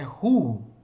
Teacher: O Vav aí com esse ponto no centro. E ele tem som de U. O Shurek é uma vogal longa, né? É o U como em uva, né?